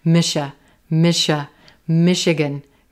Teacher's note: Here that CH is going to sound like a sh, sh.